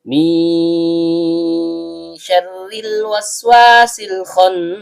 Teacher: Nun ujung lidah bertemu dengan langit-langit bagian tengah. · Karena nunnya sukun, kemudian bertemu dengan huruf shin yang keluar dari tengah lidah naik memantul ke langit-langit